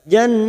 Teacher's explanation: Nun yang bertasdid gunna musaddada kita tekan selama 3 harokat. Jannatu. Nah fathah berdiri 2 harokat.